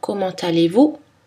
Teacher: Mais attention, la liaison est obligatoire dans comment allez-vous?